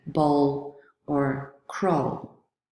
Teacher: In English, we discussed two examples of sounds with complex articulation, and that was w, which has a constriction at the lips, but also at the back of the tongue with the velum, and dark l, so the allophone of l that appears at the end of words